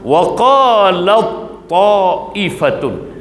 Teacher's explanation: Jadi cara kita baca tatbiq amali, huruf ta ni diidgham sepenuhnya. Bila kita baca, huruf ta ni hilang pada bacaan. Tulisan tetap ada, tetapi baca tak ada. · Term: idgham mutajannisain